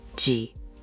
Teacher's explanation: it uses that dipping third tone you mastered last time